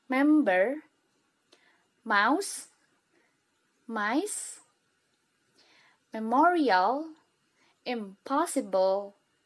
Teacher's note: bibir bawah dan atas bekerja sama dengan rongga hidung untuk mengucapkan huruf M dan N. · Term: bilabial nasal